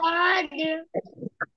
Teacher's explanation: জিহ্বার গোড়ার কিনারা। উপরে মাড়ির দাঁতের গোড়ার সঙ্গে লাগাইয়া।